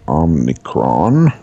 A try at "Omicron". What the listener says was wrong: Omicron, there's no N. Omicron.